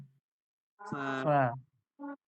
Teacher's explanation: দুটো ঠোঁট, দুটো ঠোঁটের মাঝখান থেকে হাওয়াটা বার হয়ে যাবে। দুটো ঠোঁটের মাঝখান।